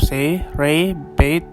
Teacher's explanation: In the RP and GA pronunciation of say, ray, bait, etc., the vowel begins with an E-like quality and ends with an I-like quality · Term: diphthong